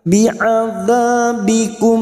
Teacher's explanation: mim sukun bertemu Hamzah dibaca jelas tanpa mendengung